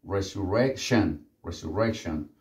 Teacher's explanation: Recuerden la terminación tion, que sería shen.